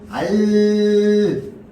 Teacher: 공기는요 혀의 양옆으로 흘러나옵니다